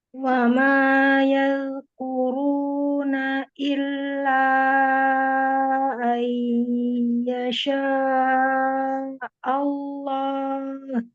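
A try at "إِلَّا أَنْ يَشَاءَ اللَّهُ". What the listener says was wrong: Nah, jangan diperhatikan ayyasa Allah, jangan berarti jadi seolah-olah ada hamzahnya tuh Allah, jadi ada hamzah sukun ada fathah lagi ya. Ayyasha Allah.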